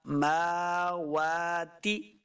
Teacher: تے پڑھیں گے تو یہ غلطی ہے، تا زیر تی ہوتا ہے